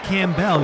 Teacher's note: interview with him but you you said his last name wrong you said camell you didn't pronounce the p